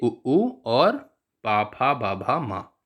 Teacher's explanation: ये सभी ओष्ठ से उच्चरित होते हैं